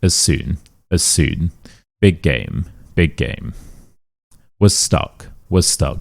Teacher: same consonant, we just link them together